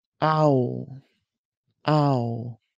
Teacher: Begin with ah and move to ooh. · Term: ow diphthong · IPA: /au/